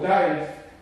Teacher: the tongue is stuck on the back of the ridge just like but there's no sound coming through the nose so it turns into a d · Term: nearest non-nasal equivalent